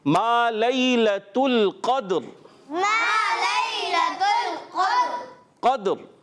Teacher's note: اگر ہم یہاں پڑھتے ما لیلۃ القدر، اب وقف آیا، وقف کی وجہ سے پیارے بچوں یہ را ساکن ہو جائے گی · لام کو ساکن رکھنا ہے، اور اس دال جو سکون والا ہے اس میں ایک حرکت جنبش ہوگی